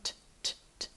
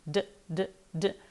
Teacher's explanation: So with the T your tongue is doing the exact same thing in your mouth but there's no voice. With a D exact same thing but this time we do produce voice